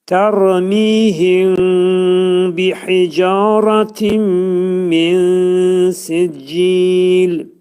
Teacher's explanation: Mim bəyə yetişəndə ağız tam şəkildə bağlanmayacaq. Ağız azacıq açıq şəkildə qalıb və mimi bəyə yetişdirib ixva edirik.